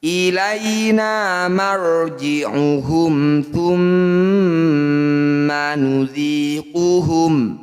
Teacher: bunyi ra kita kurangi getarannya. Angkat ujung lidah sampai menempel di langit-langit lisan. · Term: ra tafkhim